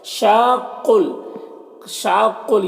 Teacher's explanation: شاقل، شاقل، یہاں پر دیکھیے الف، یہاں پر جو مد ہے یہ مد لازم ہے، اسے 3 سے 4 الف کے برابر کھینچ کر پڑھتے ہیں اور قاف حروف مستعلیہ میں سے پر پڑھیں گے۔